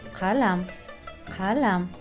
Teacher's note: K harfi gırtlaktan çıkan kalın K'dır. Arapçadaki kaf sesini karşılar.